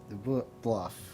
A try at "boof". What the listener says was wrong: There's no L, it's boof. The boof.